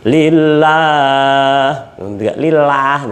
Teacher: dibaca tarukik atau tipis ya. Atau kalau saya selalu menyebutkan dibaca biasa saja.